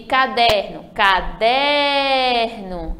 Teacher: caderno é o der penúltima sílaba também as duas palavras já são exemplos de paroxítonas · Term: sílaba forte